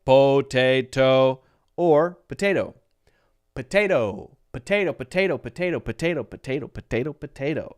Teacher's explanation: And the second one is stressed. The second syllable, te, is stressed. The first one is totally unstressed. And so it has the schwa sound. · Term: stressed syllable